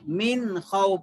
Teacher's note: نون کے بعد اگر حلق سے نکلنے والے 6 حروفوں میں سے کوئی حرف آ گیا تو نون کو ظاہر کر کے پڑھنا ہے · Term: حروف حلقی اظہار